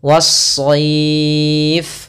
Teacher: ada alif lam yang kita tulis tapi kita tidak baca, sehingga langsung kita idghamkan ke huruf shad. Awalnya al-shayf, tapi karena dia tidak bertemu dengan huruf shad, maka lamnya diidghamkan ke huruf setelahnya sehingga lamnya hilang.